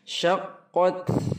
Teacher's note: Akan tetapi hati-hati ketika menghamaskan huruf ta'nits, dia tetap hamasnya atau desisnya pada koridor makhraj huruf ta. Tidak terlalu ke bawah sehingga mengambil makhrajnya huruf sin.